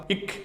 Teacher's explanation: நாக்கோட முதல் பகுதியும் அந்த மேல்வாயோட முதல் பகுதியும் தொடுதா